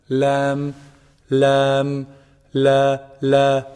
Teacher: Make sure there's no ghunna in your lam. There's some common mistake where people do produce ghunna with the lam.